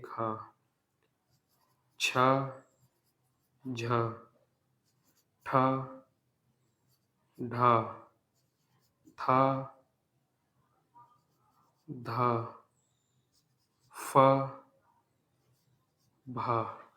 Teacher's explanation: तो बोलते समय ह की ध्वनि निकल रही